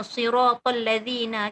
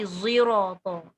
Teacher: Nak bunyi shad pun tak penuh shad, nak bunyi za pun tak penuh za. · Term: shad musyammah